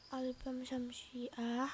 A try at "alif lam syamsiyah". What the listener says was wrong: Syamsiyah, bukan samsiah ya.